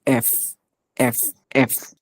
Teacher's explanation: এফ উচ্চারণের সময় উপরে দাঁত দিয়ে নিচে একটু কামড়া যেতে হবে এফ এফ এফ ওকে আরেকটু বাতাস বের হবে এফ উচ্চারণটা ঠিক